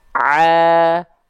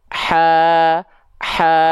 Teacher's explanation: kalau ain dia nggak keluar nafas, kalau ha kecil dia keluar nafas